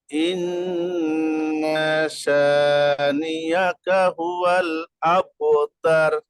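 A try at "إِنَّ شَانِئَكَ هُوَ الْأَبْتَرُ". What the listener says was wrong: মাশাআল্লাহ মাশাআল্লাহ।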